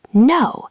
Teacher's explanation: The key word is falling. You have to start higher and let it crash down.